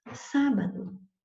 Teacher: a sílaba tônica não é a última, nem a penúltima. Ela vai ser a antepenúltima. Ante quer dizer antes, é anterior, é aquela que vem antes da penúltima. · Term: proparoxítona